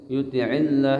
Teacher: Wa may yuti'illah ini lam jalalah tapi tarkik ya, kasrah ya. Jadi dibacanya tipis.